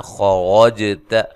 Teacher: خوا کو موٹا، را کو موٹا، جیم پہ قلقلہ، تا کو باریک پڑھنا ہے